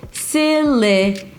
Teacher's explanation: Primary stress on the first syllable. Silly. And then it's the as in father.